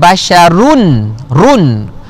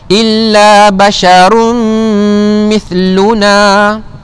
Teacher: Illa basyarum, itu idgham ma'al gunnah beserta dengung. Dengung kena baca juga.